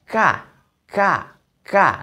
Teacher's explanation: dia sifatnya ada hembusan angin yang keluar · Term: huruf Kaf